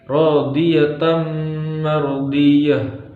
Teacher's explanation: Kemudian yang ketiga ada hukum idgham bi gunnah karena ada tanwin bertemu huruf mim. Cara membacanya yaitu memasukkan tanwin kepada huruf mim.